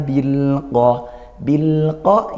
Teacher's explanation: ini izhar qamariah ya ini lam takrif bertemu huruf Qariah huruf qof sehingga dibaca jelas